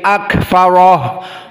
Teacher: Maka kaf ma'ak-farah, dan ha pada ha di sini dhamir akfarahu disukunkan menjadi akfaroh, harus juga hams. Maka ro di sini akfaroh dalam keadaan mufakhamah.